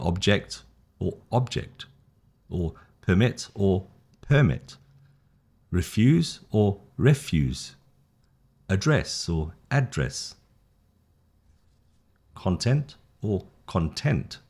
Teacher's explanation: So you see the emphasis is the noun, the first syllable, the verb is the second